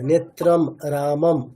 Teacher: তুমি অনুসারগুলোকে মিস কর ওটাকে বলতে হবে ম বলতে হবে